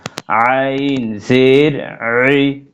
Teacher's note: আর এটা হচ্ছে আইন কণ্ঠনালী মধ্যখান